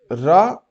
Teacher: वर्त लुंठित सघोष अल्प प्राण व्यंजन